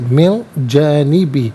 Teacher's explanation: نون ساکن کو اخفا کے ساتھ پڑھیں گے، یعنی ناظرین ناک میں آواز لے جا کر گنگنانا، اسے اخفا کہتے ہیں